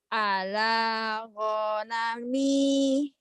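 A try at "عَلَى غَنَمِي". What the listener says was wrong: Yang panjang lah sama mi. Ala ghanami.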